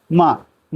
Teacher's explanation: माँ का जो उच्चारण स्थान है वह नासिका से होता है। माँ, माँ जब हम बोलते हैं तो हल्की सी नाक से आवाज आती है